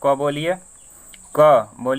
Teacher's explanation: क वर्ग में क्या होता है? सबका उच्चारण स्थान कंठ होता है।